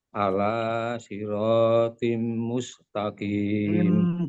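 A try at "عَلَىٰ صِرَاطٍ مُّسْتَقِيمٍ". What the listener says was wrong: Kurang, Pak. Tahan dulu. Siratim kan jadi seperti itu, ditahan. Tiga harokat kita ambil.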